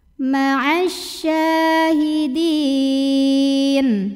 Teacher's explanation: Sya mad asli atau mad dhabi'i karena ada baris fathah tegak di atas huruf syin ya, maka bacanya panjang dua harokat.